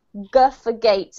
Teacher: All it means is that when you're saying the sound, G, you have to use your vocal cords. You actually have to make a sound with your voice as well as your mouth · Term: voiced